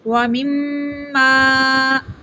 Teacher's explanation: میم مشدد ہے، اس کے اوپر رکیں گے 1 سیکنڈ، آواز ناک میں جائے گی، غنہ ہوگا۔